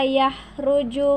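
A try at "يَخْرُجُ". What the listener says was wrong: Hindi yan ha, yan ay kha.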